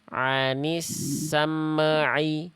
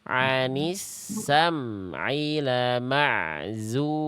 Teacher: Hukum tajwidnya izhar syafawi. Ya, baca M-nya dibaca jelas tapi jangan sampai apa? Jangan sampai memantulkan suara.